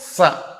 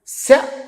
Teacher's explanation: సకారం దంత్యం శకారం తాలవ్యం